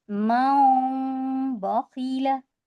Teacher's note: तो देखिए मीम को बदल कर जब हम तनवीन और नून साकिन के बाद जब बा आता है तो हम मीम, नून को मीम से बदल देंगे और मीम को पढ़ेंगे और नून को नहीं पढ़ेंगे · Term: इक़लाब